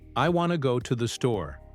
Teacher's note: Only two words, wanna and store are stressed.